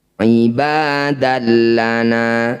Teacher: Alaikum ibadallana fathah tanwin bertemu lam disebut dengan bacaan idgham bila ghunah. Bunyi fathah tanwin dimasukkan ke dalam lam, tidak perlu diulang. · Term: idgham bila gunnah